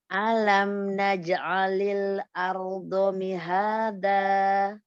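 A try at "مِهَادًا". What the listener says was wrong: Ya, kuatkan dalnya Umi. Mihada. Kuatkan.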